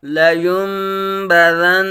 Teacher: نون ساکن کے بعد حرف با آنے کی وجہ سے اقلاب ہوگا، یعنی نون ساکن کو میم سے بدل کر اخفا کریں گے. آگے حمزہ ساکنہ میں ہمیشہ جھٹکا ہوگا.